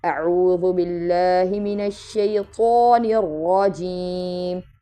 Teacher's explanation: را کو موٹا پڑھیں گے اور منہ کھول کے ادا کریں گے